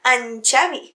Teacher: si diem en Xavi, aquesta N es pronuncia com una enya